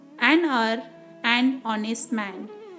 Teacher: though the word starts with H, the H is silent here, so they are having vowel sound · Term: silent letter H